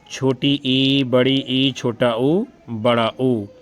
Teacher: वे स्वर जिनके उच्चारण के समय मुख सबसे कम खुलता है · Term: समृत स्वर